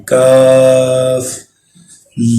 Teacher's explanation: زبان کا درمیانی حصہ تالو کے ساتھ لگائیں گے اور اس کو بالکل نارمل حالت میں پڑھیں گے۔